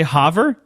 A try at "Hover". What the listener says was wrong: No, you're not. It's Hover. I maybe it's because you emphasize the U sound. I don't know.